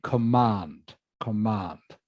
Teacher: the stress is on the second part of the word